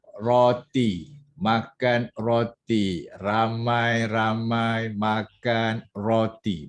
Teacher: bawah hujung lidah suruh dia tekan dekat gusi. Tekan dia sebut, tekan bagi dia rasa. Lepas tu suruh dia getarkan. · Sebab ra ni dia mesti menggunakan bawah hujung lidah. Suruh dia jangan bunyi lagi, bawah hujung lidah suruh dia tekan dekat gusi.